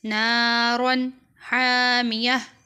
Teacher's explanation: تا جو ہے وہ ہا میں تبدیل ہو جائے گی اور یہاں تنوین پر غنہ نہیں کیا جائے گا کیونکہ ہا حرف حلقی ہے